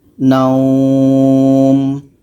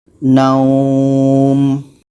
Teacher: Panjangkan dulu dekat waw ini baru masuk kepada bunyi mim.